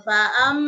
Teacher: Fa'am didengungkan 3 harokat, didengungkan 3 harokat, di situ ada mim tasdid ya, mim tasdid guna dadah. Jadi ditahan dengungnya 3 harokat